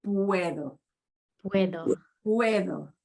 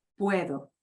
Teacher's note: and notice we hear all of those sounds the u e both the u e pronounced it's a diphthong they Glide together